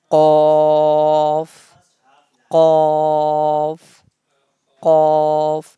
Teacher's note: the sound of off comes from the root of the tongue and soft palate